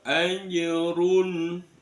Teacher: Anjurun bukan aja, anjurun cukup di tempatnya jim dilepas, itu ada pantulan kecil namanya qalqalah sughra. Anjurun, runya dibaca, roknya dibaca tafkhim tebal.